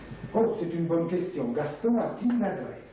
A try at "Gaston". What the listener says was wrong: Ah, bon, ici, le on de Gaston n'est pas suffisamment nasalisé. Gaston, Gaston,